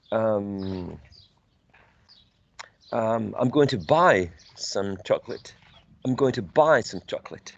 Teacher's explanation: The verb buy, which is a content word, is going to be the most prominent one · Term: nucleus